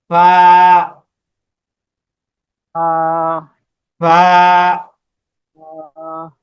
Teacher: লাগবে নিচের ঠোঁটের পেট সামনের উপরে দুইটা দাঁত আগার সঙ্গে লাগাইয়া উপরের যে দুইটা দাঁত আছে এই দুইটা দাঁত লাগবে নিচের নিচের ঠোঁটের পেটের সাথে এভাবে ফা উপরের দুই দাঁত লাগবে নিচের পেটের সাথে এই যে